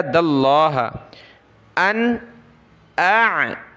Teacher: दाल को लफ्ज़ अल्लाह के साथ मिलाया